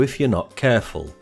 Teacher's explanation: the word careful has the stress pattern stressed unstressed but no schwar sound on the second syllable this is because the u sound is found in the unstressed